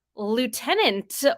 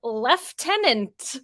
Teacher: is pronounced with an ooh sound in the first syllable but it's pronounced with an F sound in British English